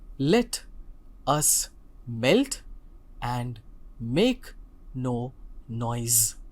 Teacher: I am as I mentioned earlier is a feet which has an unstressed syllable followed by a stressed syllable